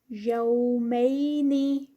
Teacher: یہاں پر واو لین اور پھر یا لین، ان کو ٹائم دیں گے۔